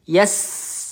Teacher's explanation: Kita alirkan dulu huruf sin. Sin sukun ya mengalir ya berdesis.